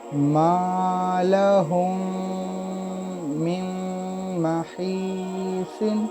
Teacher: یہاں میم ساکن کے بعد میم آیا، اس کو بھی غنہ کے ساتھ ادا کرنا ہوگا، اور نون ساکن کے بعد جو میم ہے جو یہاں ادغام ہوگا، یہاں بھی غنہ کے ساتھ ہی پڑھنا ہوگا · नून साकिन की आवाज़ को इस मीम मुशद्दद के आवाज़ में मुदगम कर देंगे, मिला देंगे। इसके वजह से ये जो मीम نون ساکن ہے اس کو ہم ادا نہیں کریں گے، کیونکہ اس کی آواز میم مشدد میں مرج ہو جائے گی۔